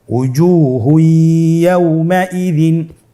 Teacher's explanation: তানবিনকে পরবর্তী হরফের সাথে মিলিয়ে গুন্নার সহিত পড়তে হবে। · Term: ইদগামে বাগুন্না